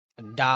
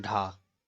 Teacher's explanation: और कभी कभी ये क्या है, जो आपके जो उत्क्षिप्त व्यंजन है, जैसे कि आपका जो डा और ढा, इसमें क्या है, अगर इसमें डा के नीचे नुक्ता है तो ये, और ढा के नीचे भी नुक्ता है, तो इन्हें उत्क्षिप्त व्यंजन बोला जाता है। और डा को मूर्धन्य सघोष और अल्प प्राण भी बोला जाता है, और ढा को मूर्धन्य सघोष महाप्राण